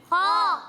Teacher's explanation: پیارے بچوں خا حروف مستعلیہ میں سے ہے، یعنی ان حروف میں سے ہے جن کو ہر حالت میں پر یعنی موٹا پڑھنا ضروری ہے. تو جب ہم یہاں پر خا کی ادائیگی کریں گے تو اسے موٹا کر کے پڑھیں گے